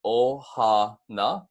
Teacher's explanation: And you're going to see at the beginning of this word, you have an okina before the o in ohana, so there is a slight break at the start of the word.